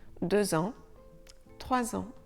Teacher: le X et le S de 2 et 3 se prononceront ZE quand on fait une liaison, c'est-à-dire quand les mots seront suivis d'un autre mot qui commence par une voyelle.